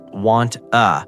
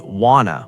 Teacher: It's not want a, it's wanna with the vowels blending smoothly